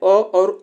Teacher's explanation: यह कंठ से उच्चारण होते हैं